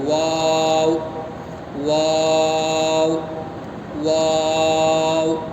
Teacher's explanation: دونوں ہونٹوں سے واو نکلتا ہے. واو، واو، واو.